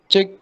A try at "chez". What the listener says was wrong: Chez. No, there's no ch sound in French.